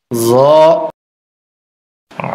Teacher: জ এই হরফটিও 1 আলিফ পরিমাণ লম্বা হবে, জিহ্বার আগা উপরের দাঁতের আগায় লাগবে, নরম হবে, মোটা হবে।